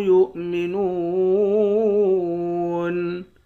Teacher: یا حمزہ پیش یو، اس طرح پڑھیں گے۔ نون کو واو کے ساتھ ملا کر واو کو ایک الف کی مقدار کھینچیں گے، واو حروف مدہ ہے، آخر میں نون ساکن ہے۔